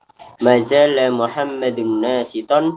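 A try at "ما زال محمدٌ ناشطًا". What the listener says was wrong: nasyiton. Naknya tidak panjang.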